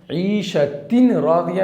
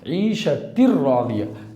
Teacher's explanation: تو تنوین کے بعد لام آ رہا ہے، بغیر غنہ کے ملا کر پڑھیں گے۔ یہاں پر ادغام ناقص نہیں بلکہ ادغام بلا غنہ اور ادغام تام دونوں نام میں سے کچھ بھی کہہ سکتے ہیں۔